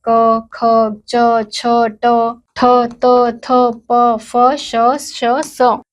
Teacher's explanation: जिन वर्णों का उच्चारण करते समय स्वर में कंपन नहीं होती है उन्हें अघोष व्यंजन कहा जाता है।